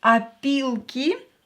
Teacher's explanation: this o will be pronounced as ah because it's not stressed